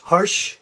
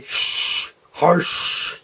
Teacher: The English word harsh has kind of a lighter sh, harsh, but the German's going to be sh, harsh, you know, so it's a harsher sound